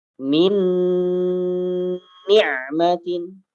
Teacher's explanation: Nun yang pertama dimasukkan ke nun yang kedua, ya. Nun yang pertama sukun, ya, dimasukkan ke nun yang kedua. Min ni'matin, ditahan 2 harakat.